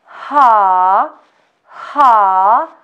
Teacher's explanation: the tongue is taken backwards and doesn't touch the lower teeth the vocal chords don't vibrate this is voiceless sound letter ha ha ha sounds you will also feel strong stream